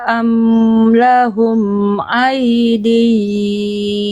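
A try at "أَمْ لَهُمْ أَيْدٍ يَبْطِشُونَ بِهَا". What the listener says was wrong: Jangan ada ain ya. Ai. Jelaskan ai. Amlahum ai ya.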